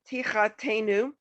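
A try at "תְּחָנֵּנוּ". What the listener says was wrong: Not te. This is a nun.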